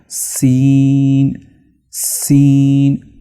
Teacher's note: सीन में जब हम टच करेंगे अपनी जुबान को वो तालू के साथ टच करेंगे तब जाकर अच्छी तरह से और मखरज से इसकी आवाज निकलेगी।